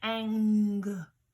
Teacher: because we don't say um right we say anger alright so the N and the G are welded sound and it kind of sits in a funny place in the back of your throat · the back of my tongue is at the top, at the roof of my mouth